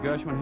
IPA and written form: ˈɡɜːrʃ.wɪn (Gershwin)